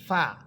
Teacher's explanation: ফা, নিচের ঠোঁটের পেট সামনের উপরের দুই দাঁতের আগার সাথে লাগবে।